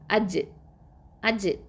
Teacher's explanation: நாவின் நடுப்பகுதியும் அதுக்கு நேராக உள்ள வாயினுடைய மேல் முரசும் என்ன ஆகுதுன்னா இணையும். ஓகேவா? இணையும். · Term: கல்கலா